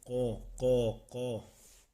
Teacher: زبان کی جڑ جب کوے کے قریب نرم تالوں سے لگے تو اس سے ادا ہوتا ہے